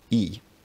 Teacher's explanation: In North Germanic languages like Norwegian, Swedish and Icelandic, it's normally just the front high vowel with no consonant